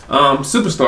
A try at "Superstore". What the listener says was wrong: Superstore. Superstore. You said Superstar.